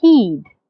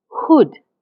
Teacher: the ha in heed, my lips are slightly spread? But the ha in hood, my lips are slightly rounded. Say them yourself and you will feel the difference.